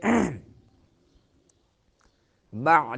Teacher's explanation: بعد موتها عین درمیان حلق سے